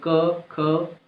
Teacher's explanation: इनमें कंपन नहीं होता है, स्वरयंत्र में कंपन नहीं होगा। अब देखिए क बोलिए, क, ख, थोड़ा सा तो टच होने पर लगेगा ही, बट ये है कि वाइब्रेशन नहीं हो रहा है। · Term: अघोष